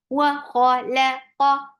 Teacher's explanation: qa for fatha open your jaws, and qaf is heavy.